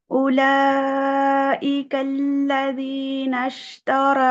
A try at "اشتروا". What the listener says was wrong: رو موٹا کریے. اشتراود، رو موٹا، رو.